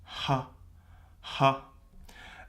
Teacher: our aspirated H which is how we would say it in English